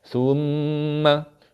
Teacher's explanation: Mim sabdu kena dengung.